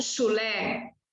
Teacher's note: CH, sempre vai ser este fonema. Nunca vai ser tch.